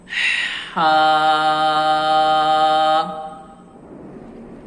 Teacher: ہا کی آواز باریکی کے ساتھ ادا کی جاتی ہے، تو ہمیشہ یاد رکھیے گا ہا کو آپ نے بھاری آواز سے نہیں پڑھنا، جیسے ہا، یہ غلط ہوگا۔